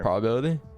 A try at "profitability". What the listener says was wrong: I think there's an extra syllable in there.